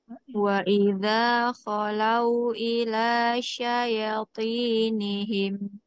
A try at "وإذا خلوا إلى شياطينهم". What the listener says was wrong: Nah, hati-hati Bu ya-nya ya. Di sini ya-nya panjang, ada fathah berdiri.